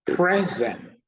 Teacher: Present, the noun, the stress is on the first syllable.